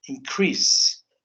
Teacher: if you notice the second syllable is higher you know or is more emphasized